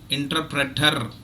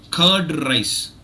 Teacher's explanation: Indian speakers usually exaggerate the R, and in fact we trill it. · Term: trilled R